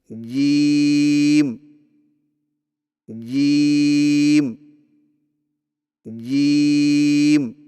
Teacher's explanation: جیم کی ادائیگی میں زبان کے درمیان کو تالو کے ساتھ سختی سے لگا کر باریک آواز میں پڑھیں